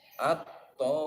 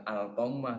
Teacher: Contohnya seperti lafaz at-tommah. Jadi bukan al-tommah tapi diidghamkan at-tommah. Di situ ada mim yang ditasdid. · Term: idgham samsi